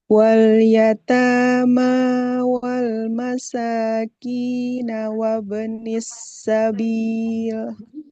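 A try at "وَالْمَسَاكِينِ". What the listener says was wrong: harokatnya wal masakini. Kan harokatnya di bawah ya. Wal masakini bukan bukan wal masakina.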